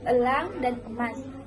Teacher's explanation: dilafalkan dengan membuka rongga mulut sedang dan lidah Berada di posisi Tengah